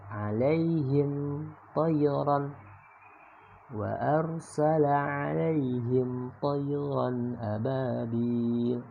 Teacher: Ada mim ketemu dengan to, maka cara bacanya menjadi jelas ya, izhar syafawi.